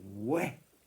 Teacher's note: Un ou étiré en ouais.